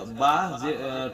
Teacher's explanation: তারপরে হচ্ছে বা, ঠোঁটের দুই ঠোঁটের ভেজা অংশ থেকে বা উচ্চারণ করব